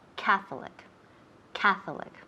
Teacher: so the emphasis of accent is on the first syllable